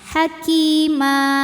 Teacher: Mad iwad sebab ada baris tanwin fathah yang kita wakafkan cara bacanya panjang dua harakat